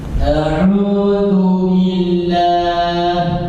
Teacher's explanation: Ada suara gunna di ain. Yang keluar dari hidung.